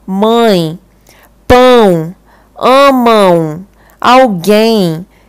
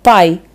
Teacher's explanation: dá para perceber nitidamente que essas palavras estão saindo pelo nariz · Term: nasalizado